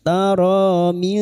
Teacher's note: nun sukun bertemu dal ikfa hakiki samarkan bunyi nun sukun dan mendengung selama 3 harokat